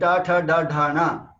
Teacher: retroflexes, which we speak by curling our tongue back. These are Dravidian sounds.